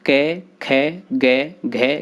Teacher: कंठ से बोले जाने वाले इन वर्णों को कंठ कहा जाता है। इन वर्णों के उच्चारण में जिह्वा कंठ का स्पर्श करती है।